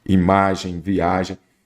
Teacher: A sílaba tônica é a penúltima. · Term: paroxítonas